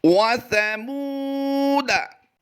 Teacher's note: अलिफ की वजह से हमने ज़बर को लंबा नहीं करना, दाल ज़बर दा पढ़ेंगे